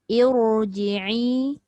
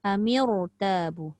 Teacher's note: Tapi keadaan bibir kita tu jadi sedikit bulat kerana ditolak oleh pangkal lidah ke atas untuk membuatkan ra itu bunyi tebal. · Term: tafkhim